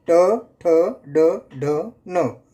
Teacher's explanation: मूर्धन्य तालु के मूर्धा भाग से